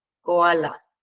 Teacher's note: la formación de un falso diptongo. Esto utilizamos para restar una sílaba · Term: sinéresis